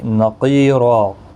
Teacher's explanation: قاف مستعلیہ ہے، پر پڑا جائے گا، یا مدہ بھی ہے، 1 الف کی مقدار کے برابر کھینچ کر بھی پڑھیں گے۔